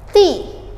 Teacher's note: Cara pengucapan huruf T-nya itu digigit, ujung lidahnya itu kita gigit sedikit